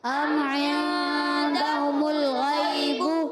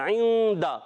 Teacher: ام میں تو ہم نے غنہ نہیں کیا، عند میں غنہ کیا. اب یہاں میم ساکن کا قاعدہ تھا، اظہار شفوی تھا، غنہ نہیں کیا.